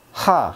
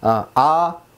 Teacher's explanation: 목구멍이라든가 혀라든가 입술이라든가 아무런 변화가 없이 소리가 바람이 강하게 나오면 하가 되고요. 천천히 부드럽게 나오면 아가 됩니다.